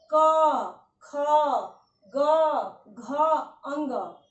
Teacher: आपका जब वायु कम निकले, यानी 1, 3 और 5, क ग अंग में कम निकल रहा है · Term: अल्पप्राण